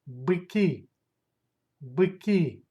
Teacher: Stress goes to last syllable.